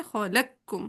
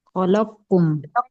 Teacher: جو مدغم ہے یعنی بڑے موٹے والا قاف وہ ڈراپ ہو جائے گا، ٹھیک ہے؟ اور ڈائریکٹ ہم باریک والا کاف تشدید کے ساتھ پڑھیں گے، خلقکم، کیسے؟ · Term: ادغام تام